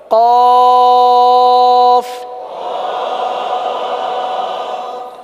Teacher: زبان کی جڑ اور تالو کا نرم حصہ، یہ قاف کا مخرج ہے